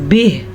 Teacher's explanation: وقف پہ ہا ساکن ہو گیا. ہا کی آواز ضرور نکالنا.